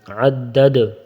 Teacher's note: یہ دوسرا والا جو دال ہے اس کے اوپر وقفاً میں سکون آ جائے گی تو اس کو پھر قلقلہ کریں گے